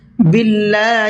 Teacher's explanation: اللہ کے نام کو باریک کر کے پڑھنا ہے اس لیے کہ اللہ کے نام سے پہلے زیر ہے